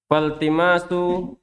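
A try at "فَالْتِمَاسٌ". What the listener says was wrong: Tanwin.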